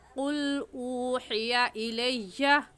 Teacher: اوحیا کو تھوڑا سا کھینچیں گے ایک الف کے برابر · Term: واو مدہ